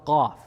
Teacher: Qaf is a heavy letter, comes from the back of the throat, so it takes more effort to pronounce.